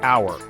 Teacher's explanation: it starts with h a consonant but it sounds like it starts with a vowel